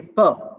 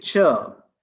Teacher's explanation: it is coming out suddenly but when i say chirp means the lips are opening slowly and that's why the release of air is a bit slow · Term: affricate